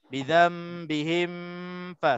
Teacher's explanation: Sebab mim mati dengan fa tu dekat-dekat tempat keluarnya. Tapi pada hakikatnya di sini tak ada dengung. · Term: izhar syafawi